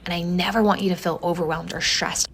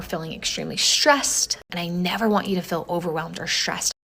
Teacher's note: Specifically, the tongue is further back and the lips are a little bit rounded. What's going on is that the influence of the R is spreading forward to affect the S. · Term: S retraction